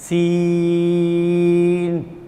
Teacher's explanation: زبان کی نوک اور اوپر نیچے کے دانت جب آپس میں ملیں گے تو سین کیسے؟ سیٹی نکلے گی، سیٹی کی آواز آئے گی، سین، ایسے الفاظ نکلتے ہیں۔